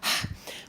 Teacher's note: h, which is a friction sound again, but it doesn't have a pair